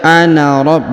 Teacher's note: Jadi dibaca ana rabb bukan 2 harokat tapi dibaca 1 harokat ya.